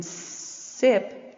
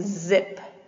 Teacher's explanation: voiceless alveolar, like in sip. And we have the z, which is voiced alveolar